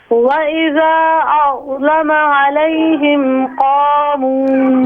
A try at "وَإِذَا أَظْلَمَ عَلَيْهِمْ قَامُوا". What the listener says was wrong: یہاں پر مت کو ذرا لمبا کریں.